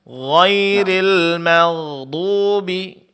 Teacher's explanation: Jadi bunyi sukunnya agak lebih panjang dibandingkan yang memiliki sifat syiddah. Karena sifat syiddah suara tertahan. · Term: sifat rakhawa